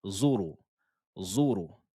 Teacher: la lettre ro ici est toujours emphatique, elle est toujours grave